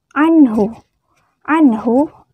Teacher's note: nun mati bertemu dengan huruf H harus dibaca jelas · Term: Izhar